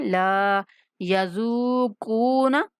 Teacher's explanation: لام کے بعد الف مدہ ہے، اس لیے لام کو کھینچنا ہے